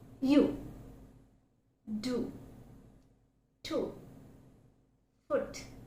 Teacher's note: it's almost in a closed position, and we find the lips are loosely rounded, as in O, kind of lips are loosely rounded.